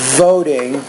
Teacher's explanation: for voting rights LED bus boycott you say the word voting make sure you pronounce that V with more vibration this is a fricative consonant